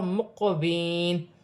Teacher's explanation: قلقلہ پیدا ہوگا, موٹا حرف ہے. یا ساکن سے پہلے زیر ہے تو یا مدہ بنے گی, اسے ایک الف کی مقدار کھینچ کر پڑھا جائے گا. · قاف حروف قلقلہ میں سے ہے, تھوڑا قلقلہ پیدا ہو. مقوین, قلقلہ پیدا ہوگا, موٹا حرف ہے.